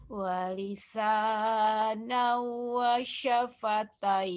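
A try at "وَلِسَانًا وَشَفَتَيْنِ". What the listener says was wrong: jangan, kalau wasyafatain ada tasdid. Wasyafatain, jangan ada wasyafatain. Jangan ada pendobel.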